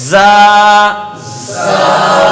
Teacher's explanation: جب ہم زا کو ادا کرتے ہیں تو اس میں مثل سیٹی کے تیز آواز نکلتی ہے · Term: صفت صفیر